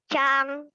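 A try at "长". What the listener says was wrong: Bukan, Chang. Nada kedua. Kalau kamu tadi Chang itu nada keempat ya. Chang. Belok suaranya.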